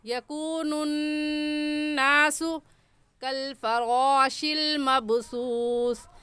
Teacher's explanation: रा को पुर यानी मोटा करके पढ़ेंगे। और मोटा करने का तरीका कि आपके दोनों होंठ गोल हो जाएं